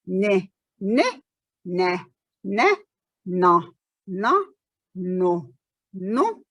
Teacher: tip of the tongue going up, air escapes through the nose.